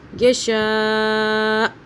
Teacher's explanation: حمزہ کو رکنے کی صورت میں ہلکا سا ادا کرنا ہوگا تاکہ پتہ چلے ہم نے حمزہ کو پڑھا ہے، یعنی کہ ساکن والی آواز میں پڑھیں گے۔